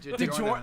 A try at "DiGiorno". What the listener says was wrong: DiGiorno. DiGiorno. No, you're changing the G from like other G. or Jeff or like whatever.